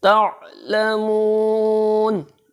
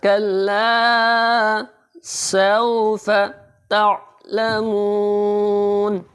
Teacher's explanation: تا کو جب عین کے ساتھ ملائیں گے تو تھوڑا آواز کو جھٹکا دے کے پڑھیں گے، اور عین کو حلق کے درمیان سے نکالیں گے۔